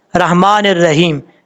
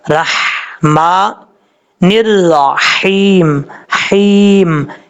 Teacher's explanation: یہ جو ہا ہے اس ہا کو حمزہ پڑھ جاتے ہیں، ایسا نہیں کرنا، ہا کو کلیئر کرنا ہے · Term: ہا بریک